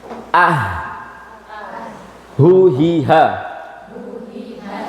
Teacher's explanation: huruf ha dipita suara juga di Pangkal tenggerokan aqsal halqi